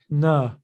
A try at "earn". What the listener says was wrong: And keep that, again, quiet without that extra sound.